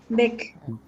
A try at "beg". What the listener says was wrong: Ga, not ka, yeah? Remember, very often people are confused. Beg. Ga. If you say ga, ga, ga, Lady Gaga.